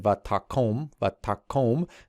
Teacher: in this particular verb, the accent retracts here to the ta